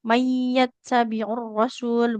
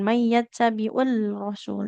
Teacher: Jadi huruf lamnya tidak kita baca langsung melebur ke huruf roya. · lam nya jadi enggak dibaca langsung ke huruf r-nya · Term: idgham syamsiyah